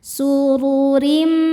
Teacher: Kemudian ro yang kedua dibaca secara tarqiq karena barisnya di bawah kasroh tanwin. Cara bacanya ditipiskan.